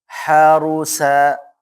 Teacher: dhammah ra-nya dibaca tebal ya, atau tafkhim